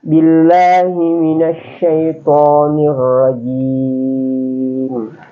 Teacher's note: Jadi billahi itu tidak boleh tebal.